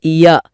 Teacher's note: இது நாவோட அடிப்பகுதி மேல்வாயின் அடிப்பகுதியை பொருந்துவதால பிறக்குது.